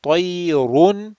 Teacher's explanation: Okay, tayr, if you stop, if you don't stop, tayrun, and as you come, the ra will be rounded because of the dhammatain